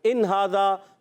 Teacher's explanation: یہاں اظہار حلقی ہوگا, غنہ نہیں کریں گے. یہاں غنہ نہیں ہوگا.